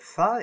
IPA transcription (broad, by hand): θ